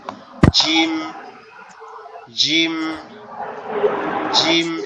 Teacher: জিম যে হরফটা, এটা হচ্ছে আপনার আমাদের জিহ্বা উপরের তালুর সঙ্গে লাগবে। জিহ্বার জিহ্বার মধ্যখানটা উপরের তালুর সঙ্গে লাগবে